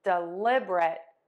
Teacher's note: Or you have the three syllable option. Again, we're still stressing syllable number two, dɪˈlɪbərət.